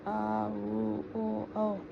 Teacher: जिन स्वरों का उच्चारण करते समय जिह्वा का पश्च भाग ऊपर उठता है पश्च स्वर कहलाते हैं